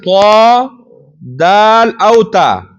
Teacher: د پورتنیو ثنایا او غاښونو سره طا او دال او تا ادا کیږي د ژبې سر او د ثنایا علیا د غاښونو د بیخونو